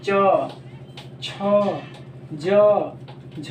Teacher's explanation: तालव्य व्यंजन जिसको बोलने से हमारी जो जीभ है वो तालू में क्या हो रही है? सट रही है बोलने पर।